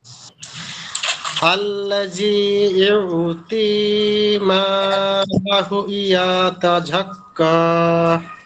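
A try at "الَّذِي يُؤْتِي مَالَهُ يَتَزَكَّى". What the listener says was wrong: ইয়ার উচ্চারণটা আরেকটু সুন্দর হবে। ইউ ই, ইয়া হামজা পেশ ইউ, ইউ ই।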